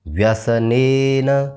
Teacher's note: ने यानी ए की मात्रा है इसको थोड़ा लंबा खींचना है